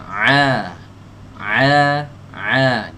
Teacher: keluar dari tenggorokan bagian tengah